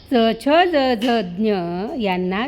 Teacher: च छ ज झ ज्ञ यांना तालव्य म्हणतात, कारण यांचा उच्चार करताना जीभ टाळूला लागते.